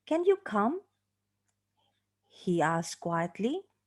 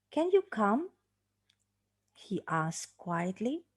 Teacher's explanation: When we have got this pattern, the tail, the connecting passage, will be pronounced as an unstressed tail also. So here, the question, can you come, is pronounced with the significant rise, yeah, the final rise on the word come, and the tail, the connecting passage, will be continuing as the tail of the unstressed syllable, and it's also pronounced with rising intonation.